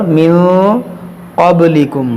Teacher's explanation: با میں قلقلہ کریں گے اور یہاں پر اخفا کریں گے۔